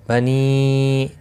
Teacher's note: بنی چھوٹی مد ہے، 3 الف کے برابر کھینچ کر پڑھیں گے